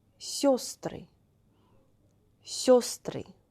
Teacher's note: Instead of «е», we should say «ё», and place of accent should be changed automatically.